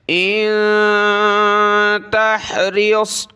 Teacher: نون ساکن پر ناک میں آواز پیدا کی